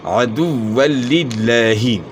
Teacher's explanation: لام کو پھر لام کے ساتھ ملانا ہے، اور شد کو جو ہے نا خوب جماؤں کے ساتھ اپنے ادا کرنا ہے. جہاں جہاں مشدد حرف ہے اس کو خوب جماؤں کے ساتھ ادا کرنا ہے، ڈھیلا کر کے نہیں پڑھنا. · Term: ادغام ہوگا بلا غنہ